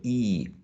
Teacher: it's a long high front unrounded tense vowel sound